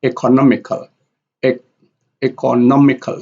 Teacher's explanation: If we compare A here with E here, economical, e economical. So economical here, A is the second loudest and no here is the loudest. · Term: secondary stress